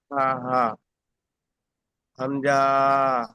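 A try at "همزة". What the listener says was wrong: হামজা, এখানে যে এই ক্রস চিহ্ন, জি ভাই এখানে এই যে ক্রস চিহ্ন আছে, ক্রস চিহ্ন থাকলে এখানে মোটে টান হবে না, হামজা।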